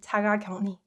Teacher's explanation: It's more clean, 자가격리, and it's easier to pronounce. So when uk is combined with 르, this uk softens to 응, and 르 gets replaced with 느 sound